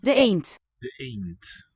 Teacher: Note the devoicing of the D.